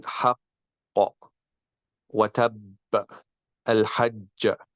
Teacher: the qalqala is for the second of the doubled letter, because the first is merged and is admitted by collision between the 2 components of the articulating parts.